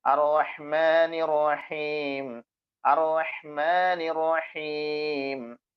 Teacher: തൊണ്ടയുടെ മധ്യഭാഗത്ത് നിന്നാണ് ഹ വരുന്നത്.